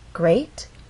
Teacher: means this is the point where a voice will go up great has one syllable so we only have one syllable to make our voice glide up great and we're using rising intonation because this question requires a · have one syllable to make our voice glide up great and we're using rising intonation because this question requires a yes-or-no answer